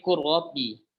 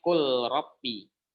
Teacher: Lam bertemu dengan ra, maka kita idghamkan. Kita leburkan seluruhnya lam ketika bertemu dengan ra. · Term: Idgham kamil